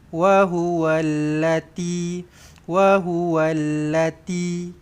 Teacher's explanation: Kena tebal sikit. Kalau sebab kalau nipis-nipis sangat dia akan jadi huruf ta nanti.